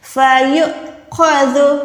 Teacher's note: جھٹکا لگائیں گے. واو کو ادا نہیں کریں گے، اس چھوٹے سے حمزہ کو ادا کریں گے جھٹکے اس کے ساتھ